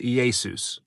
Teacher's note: But next problem is that the two vowel sounds before the S do not flow and do not exist in Greek. So the last vowel was dropped again, very common, leaving us with EE-AY-SOOS, which is the closest a Greek speaker could come to transliterating the name Yeshua from Hebrew to Greek.